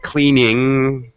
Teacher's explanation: your tongue is folded up halfway back for the NG